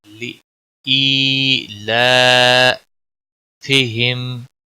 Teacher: لام کے اوپر کھڑی زبر ہے، 1 الف کے برابر کھینچ کر پڑھیں گے